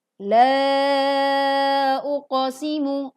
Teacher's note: La uqsimu ada pelajaran Mad Jaiz Munfasil. Mad Thobi'i bertemu dengan hamzah dalam kalimat yang berbeda, sehingga dibaca sepanjang 2 atau 5 harakat.